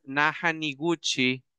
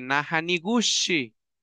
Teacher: si a usted se le olvida y pronuncia la che como la sh se convirtió en una fruta y ya no es un verbo